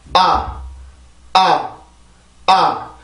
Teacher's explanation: 아 발음을 할 때는 턱이 많이 열리죠. 아 이렇게 열리고 혀 끝은 아래 치조 뒤에가 있어요. 그리고 혀 중간 부분은 턱이 내려가면서 자연스럽게 내려가 주면서 소리가 아주 짧게 발음이 되죠.